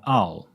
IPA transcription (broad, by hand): aʊ